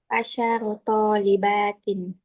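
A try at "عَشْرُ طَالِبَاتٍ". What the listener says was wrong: Shinnya sukun mati. Ashru. Ashru talibat.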